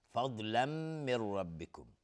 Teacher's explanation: ضاد هم باز از حروف استعلاست، غلیظ تلفظ میشه. تنوین بعدش میم، ادغام با غنه